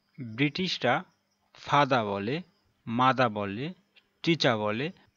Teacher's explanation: অর্থাৎ শেষের আর উচ্চারণ হয় না, আবার মাঝে আর থাকলে সেটিও ব্রিটিশরা উচ্চারণ করে না